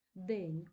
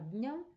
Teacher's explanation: у сильній позиції під наголосом звук зберігся а дня звук занепав випав щез тому що це слабка позиція